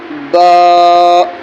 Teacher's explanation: یہ دونوں ہونٹوں سے ہلکا سا ہونٹ ملیں گے اور علیحدہ ہو جائیں گے۔